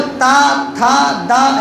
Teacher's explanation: जो ता में दांत में अड़ना चाहिए जीभ को, तो जब ता था दा ऐसे निकलता है, इसीलिए बूढ़े इस वर्ण को, ये उनका तवर्ग गड़बड़ा जाता है।